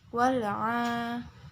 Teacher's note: Ain ini hukum bacaannya itu matobi'i. Jadi dibacanya panjang 2 harokat.